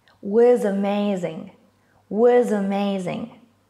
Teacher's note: we are linking words here by connecting a consonant and a vowel sound together